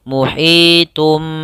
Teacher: Iqlab yaitu membalikkan suara nun menjadi suara mim. Pada dasarnya di sini muhitun, karena bertemu dengan ba maka ditandai dengan mim kecil dalam penulisannya, sehingga ini ibaratnya kita matikan mimnya.